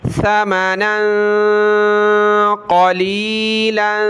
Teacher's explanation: दोनों के ऊपर ये दो ज़बर तनवीन कलरफुल है, दोनों जगह नाक में आवाज़ पैदा करेंगे